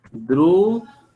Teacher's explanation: la misma palabra esdrújula es esdrújula porque lleva la mayor fuerza de voz en la antepenúltima sílaba, que es dru